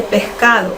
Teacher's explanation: el limeño dice pescado, no acentúa la S, no, sino que la S como que le da un sesgo de J, un sonido de J